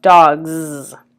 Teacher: So plural S in cats is an S. In dogs, the plural S becomes a Z.